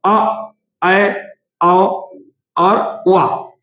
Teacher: इनके उच्चारण में मुख द्वार सिर्फ आधा ही खुलेगा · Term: अर्धबीव्रत